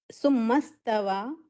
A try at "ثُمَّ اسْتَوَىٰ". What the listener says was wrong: आज मूड में नहीं है पढ़ने के। अस्तवा पढ़े आप, हालांकि ये साकिन है